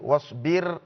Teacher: In the word wasbir, the ra here is supposed to be pronounced bitarqiq